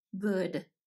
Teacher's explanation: at the front of the mouth what book would with good the pronunciation of the G sound is in the back of the mouth